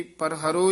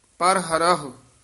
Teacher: ਕਈ ਪਰਹਰੋ ਹੀ ਕਹਿ ਦਿੰਦੇ ਨੇ ਇੱਕ ਹਾਹਿਆ ਛੱਡ ਜਾਂਦੇ ਨੇ ਦੋਵੇਂ ਹਾਹੇ ਉਚਾਰਨ ਕਰਨੇ ਹਨ